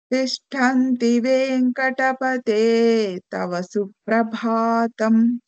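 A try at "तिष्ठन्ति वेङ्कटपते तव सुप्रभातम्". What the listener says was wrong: Bhatam. Him has to be extended for quarter matra more.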